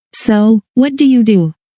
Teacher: In fast, natural speech, what do you do? Often links together into something like, what ya do?